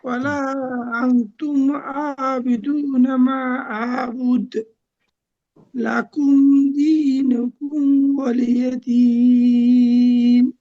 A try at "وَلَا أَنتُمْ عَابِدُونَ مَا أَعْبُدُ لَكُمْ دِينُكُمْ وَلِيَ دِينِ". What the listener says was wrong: মাশাআল্লাহ, সুন্দর হয়েছে, অনেক সুন্দর।